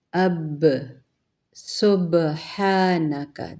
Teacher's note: جب آگے پر جزم آئی تو سبحانک، ب خود بہت نمایاں پڑھا جائے گا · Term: قلقلہ